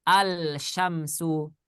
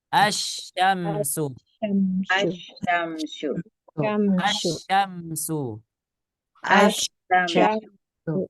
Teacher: maka lamnya tidak dibaca bacanya bukan alsyamsu Tapi bacanya asyamsu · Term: Idgham Syamsiah